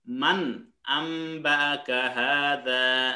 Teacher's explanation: কিন্তু নুন সাকিনের পরে আলিফ আসছে, আলিফ মানে হামজা হা, এই 6টা অক্ষরের যে কোনো একটা অক্ষর আসলেই এই আলিফটাকে স্পষ্ট করে পড়তে হবে, নুন সাকিনটাকে স্পষ্ট করে পড়তে হবে। এখানে মাং বলা যাবে না